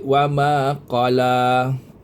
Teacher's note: Kaf lam alif atas la. Lam alif atas la ni mad asli dua harakat. Ma juga mad asli dua harakat.